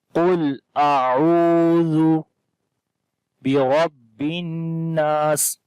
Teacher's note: با کے نیچے زیر ہے، باریک پڑھیں گے، را کو موٹا پڑھیں گے